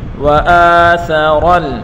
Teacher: ثا اور را دونوں کے اوپر پڑھی حرکتیں بغیر کھینچے پڑھیں گے اور را کو لام کے ساتھ ملا کر پڑھیں گے. وآثر ثا کو نرمی کے ساتھ پڑھیں گے اور را کو پر پڑھیں گے